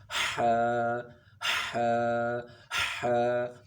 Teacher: ح کا مخرج حلق کے درمیان سے ہے، وسط حلق، اس کو کہتے ہیں وسط حلق. · اور ح کو 1 الف کے برابر کھینچ کر پڑھنا ہے، اور اس کے پڑھنے سے پہلے ایک سانس کی جو آواز ہے، سانس ہے وہ باہر کی طرف آنا چاہیے. اس میں آپ اگر سامنے منہ کے آگے ہاتھ رکھ کے پڑھیں گے تو آپ کو سمجھ میں آئے گا.